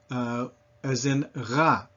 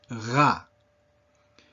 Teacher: in French, it is way back in the back of your throat, and you use the exact same muscles that you use when gargling. And so that's actually how I recommend that if the French R is difficult for you, that you practice by getting some water and gargling, preferably over the sink. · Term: The famous French R